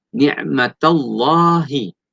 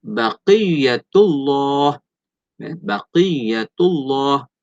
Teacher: Lam pada lafzul jalalah yang dibaca tebal, iaitu lam tafkhim.